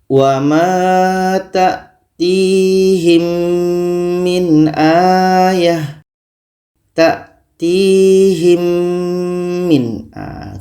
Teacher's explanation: kita dengungkan dengungnya dua harakat contoh yang kedua ini dalam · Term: idgham syafawi